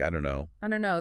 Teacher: the t is gone the vowel is different and don't and no link seamlessly don't know it feels like one unit. · you rarely hear the final T of don't pronounced clearly. It often gets dropped, especially before a consonant like the N in no, right? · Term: sounds disappearing